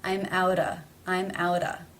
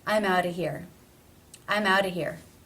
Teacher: the word of is generally reduced to simply being the schwa sound no consonant